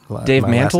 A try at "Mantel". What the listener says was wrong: Oh, not Mon. It's Man.